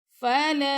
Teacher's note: لام کے ساتھ الف آ گیا، یعنی کہ الف مدہ، تو ہم لام کو 2 سیکنڈ تک لمبا کریں گے